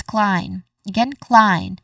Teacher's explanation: We start with a consonant cluster followed by a diphthong sound I and ends with a nasal sound letter N. So this means that the letter E at the end in the spelling is a silent letter.